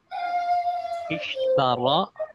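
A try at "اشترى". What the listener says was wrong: Agak panjang, ada alif bengkok ya, ketemu lagi Ishtaro. Nah, agak panjang.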